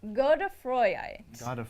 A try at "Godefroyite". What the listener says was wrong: Yeah, it's more of a god sound than a goad sound.